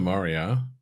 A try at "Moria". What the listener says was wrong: An extra syllable there somewhere.